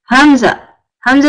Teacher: Hamza is from the bottom of your throat